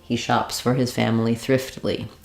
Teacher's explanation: the stressed word in this phrase is that final word thriftily it's longer it's the most important word so some of these other words were a little bit reduced